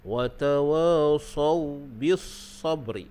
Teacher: Baik, kita tengok situ ada hukum lin pada sawbi. Sawbi yang mana huruf waw tu ada sukun, sebelumnya ada fathah, maka dibaca dengan lin